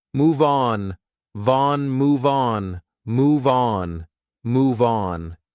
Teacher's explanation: on is a vowel, so we can transfer that sound and we can say these two like one word